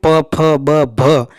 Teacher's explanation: उच्चारण करने पर जिह्वा का प्रयोग कम होकर ओठों का प्रयोग ज़्यादा होता है, भ है ना, ओठ आपस में मिलते हैं। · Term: ओष्ठीय व्यंजन